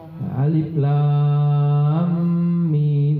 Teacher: Ee bunyi mim matinya masuk ke mim hidup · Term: idghamnya, idgham